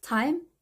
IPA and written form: taɪm (time)